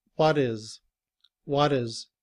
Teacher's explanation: when it's combined with the word what, the letter T becomes the sound of the letter D. And we say, "What is what is?" What is he going to talk about?